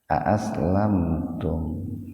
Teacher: Lamnya juga sama dibaca sepintas saja, jadi jangan ditahan dua ketukan